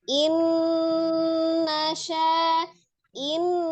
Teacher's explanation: dipertahankan gunnahnya, ditahan 2 sampai 3 harokat tuh suaranya masuk ke rongga hidung.